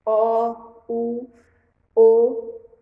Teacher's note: Vogal redonda é o O e o U.